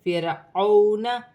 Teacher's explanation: واو ساکن سے پہلے زبر واولن بن رہی ہے، اسے کھینچا نہیں جائے گا